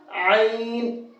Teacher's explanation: اس کو ہم حلق سے نکالیں گے اور اس کا مخرج ہے مڈل حلق سے، یعنی کہ حلق کا جو بیچ کا حصہ ہے وہاں سے اس کو نکالیں گے، عین۔